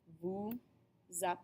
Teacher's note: at the beginning of app is going to form that liazon note that the S does not make an S sound when liased it makes a z